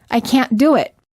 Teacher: instead of saying I can't do it Americans hold the T and say I can't do it